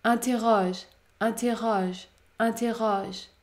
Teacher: dans ce cas la voyelle O est ouverte